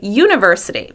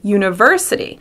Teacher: Native English speakers say uniVERsity.